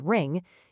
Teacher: So, where does the air go? Well, it gets rerouted up and out through your nose. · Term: nasals